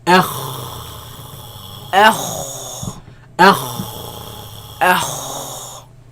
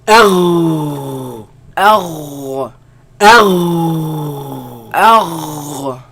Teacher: Now, but where do they come from? They come from the top part of the throat, right? Where the root of the tongue raises against the uvula and produce the sound.